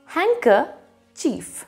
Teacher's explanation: it has a silent d it also has a silent r so you will read it as hanker chief whenever my grandfather